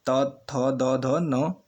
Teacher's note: करते समय ऊपरी दांतों को क्या करें, स्पर्श करें, तो ऐसे व्यंजन क्या कहलाते हैं, दंत्य व्यंजन कहलाते हैं